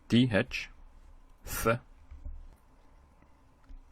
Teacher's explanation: Th is like the sound TH in thunder. It's using the tongue and the lower teeth to make the sound.